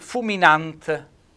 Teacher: vedete un bel accento tonico sulla A